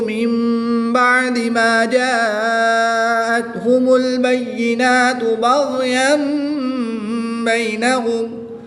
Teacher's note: فی وما اختلف فیہ الا الذین اوتوہ من بعد ما جاءتہم البینات بغیا بینہم۔ یہاں پر نون ساکن کے بعد با ہے، تو یہاں پر اقلاب ہوگا، نون ساکن کو میم سے بدل کر غنہ زمانی کریں گے